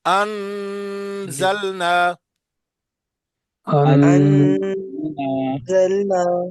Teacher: جس طرح میں پڑھ رہا ہوں، انزلنا، نون کو ظاہر کر کے پڑھنا ہے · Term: نون ظاہر